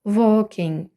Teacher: перед w завжди читатиметься як O і в сполученні A K L не вимовляється і тому аби компенсувати цю відсутність стає подовженою · у суфіксі ING ми г на кінці не прочитуємо стає носовою